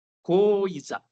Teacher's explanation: A semivogal tem um som mais fraquinho e rápido. Fraco e rápido.